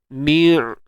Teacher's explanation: Wa huruf ain ni jangan lupa tawassut. Suara sedang-sedang je, jangan tahan, jangan lepas. Ni'. Okey, tu tawassut pertengahan.